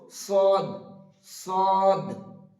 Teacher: সদটা হবে মাড়ির দাঁতের সঙ্গে জিভের একটা কিনারা লাগিয়ে দিতে হবে